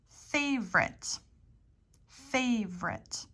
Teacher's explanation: the O is kind of omitted here it's an omitted vowel